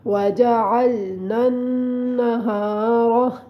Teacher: را کو اوپر پڑھنا ہے کیونکہ را کے اپنے اوپر زبر آ رہی ہے۔